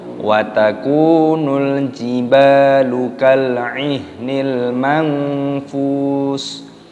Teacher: Di sini kafnya dipanjangkan, ada wawu sukun, dibaca mad tabi'i dipanjangkan 2 ketukan. Dan di sini ada alif lam qamariyah, lamnya sukun dibaca watakunul.